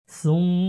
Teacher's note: মিমের উপর তাসদীদ আছে, গুণনা করা আবশ্যক, গুণনা করতে হবে।